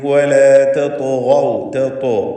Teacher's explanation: തത്തു എന്ന് പറയുമ്പോൾ ത്വാഇന് തഫ്ഖീമുണ്ട്, ഇത്ബാഖിൻ്റെ അക്ഷരമാണ്. കൂടാതെ അതിന് ഖൽഖലയുണ്ട്.